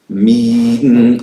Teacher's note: Because there is no ghunna allowed in me. In the E there is no ghunna. The ghunna appears with the noon.